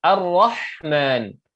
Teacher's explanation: Ar-Rah di situ di tengah kerongkong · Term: ha yang pedas